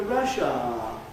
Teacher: you’ve got only the /aː/ vowel there, not even /aə/, a diphthong of any sort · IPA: /ˈrʌʃaː/